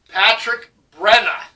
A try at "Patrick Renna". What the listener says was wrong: Renna. With an R. No, it's Renna. Ruh. No buh, just a ruh. Renna.